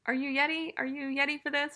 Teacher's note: it's common, for a 5-year-old to use a y sound instead of a r sound.